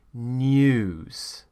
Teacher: And what they're doing there is they're pronouncing it more like it's spelt, n-ooze. In British English, we create this y sound and it becomes news. So this happens when we have particular consonants at the beginning of a word and then an oo sound comes after.